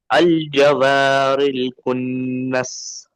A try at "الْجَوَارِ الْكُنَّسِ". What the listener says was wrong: را बारीक पढ़िए, मोटा हो गया را।